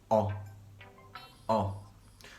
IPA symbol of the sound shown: ɒ